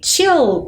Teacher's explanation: ti u é til com um l mas o l no final das palavras ele tem o som de u